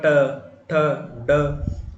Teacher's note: जीभ का जो बिल्कुल जो शुरुआती भाग होगा जो बिल्कुल आगे से जो पॉइंट होता है जीभ का वह टच करता है आपके मूर्धा को।